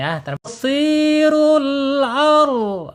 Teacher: Ingat sebelum ro sukun di sini ada fathah harus dibaca tebal.